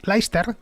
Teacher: Los ingleses sin más se comen el Cester, el C se lo comen entero.